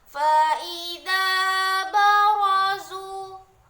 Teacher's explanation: ro di situ adalah dibaca dengan tafkim karena dia berbaris fathah jadi cara membacanya ditebalkan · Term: tafkhim